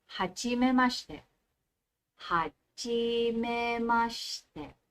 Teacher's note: So, umangat, bumaba, umangat, bumaba. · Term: intonation